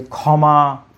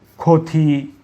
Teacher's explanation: এই বর্ণটি যখন শব্দের প্রথমে বসে তখন এই খ হিসেবে উচ্চারিত হয়। যেমন যদি আমি বলি যে ক্ষমা, তারপরে যদি বলি যে ক্ষতি ইত্যাদি, খ সরাসরি খ উচ্চারিত হয়।